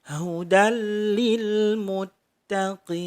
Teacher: Hudal lil muttaqin, ada fathah tanwin bertemu dengan lam. Cara membacanya adalah dengan meleburkan fathah tanwin ke lam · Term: idgham bila gunnah